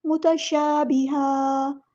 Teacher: یہاں پر وقف اگر کریں گے تو دو زبر کو ایک زبر میں کنورٹ کرتے ہوئے مد اصلی کریں گے، اسے وقف بالابدال کہتے ہیں.